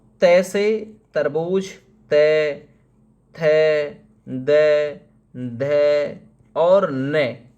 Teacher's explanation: दंत मतलब दांत। जो तय वर्ग का उच्चारण स्थान है दोस्तों वो दंत्य है।